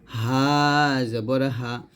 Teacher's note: এই হা টা আমরা গলার শুরু থেকে বলবো পাতলা করে